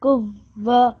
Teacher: This is just an ordinary dhamma, okay? You don't make any sort of nasalization sound. This is the qaf and the wow will join.